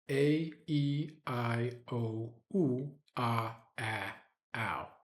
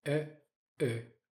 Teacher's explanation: you probably noted a difference in length between the tense vowel sounds and the lax vowel sounds. With the tense vowels, we generally want to let them ride long.